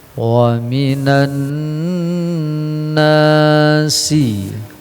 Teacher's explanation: ada alif lam, tapi yang terbaca adalah nun bertasydid gunnah, kemudian dua harokat ya, pertama gunnah, yang keduanya mat tabi'i.